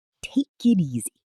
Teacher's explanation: Don't pause between the words. Let the K in take connect to the I in it. And let the T in it connect to the E in easy.